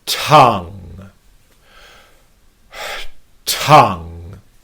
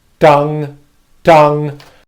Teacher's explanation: builds up and then releases so if we sigh and then I make a t- sound that pauses the air flow and then I release the air flow here's the amount of air flow that would come out Tong